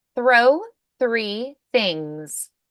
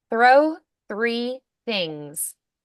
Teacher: Throw, unvoiced. Three, unvoiced. Things, unvoiced. All three are unvoiced.